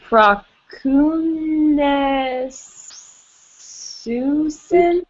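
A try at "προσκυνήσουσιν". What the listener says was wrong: I'm sorry, there's supposed to be a sigma in between that omicron and kappa. Pros. Proskunesusin.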